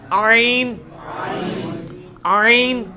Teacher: لیکن میں نے آپ کو یہ چیز سکھایا, ہا کا مخرج جو ہے نا یعنی وسط حلق, ادھر ہی سے یہ آئین بھی نکلنا ہے